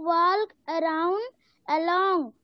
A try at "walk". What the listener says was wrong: बेटा दो चीजें आपने गलत पढ़ा, पहले बात ये walk नहीं है, यह है walk. L is a silent letter. Walk नहीं होता, talk नहीं होता, talk होता है। L साइलेंट लेटर होता है, एल का साउंड आपको नहीं निकाला जाता।